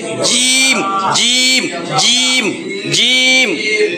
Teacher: জিম উচ্চারণ হবে জিহ্বার মধ্যভাগ উপরের তালুতে যায় লাগবে, জিম জিম জিম জিম, শক্ত জিম।